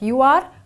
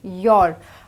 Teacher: when we contract them, we don't say them as two separate words like you are, we say your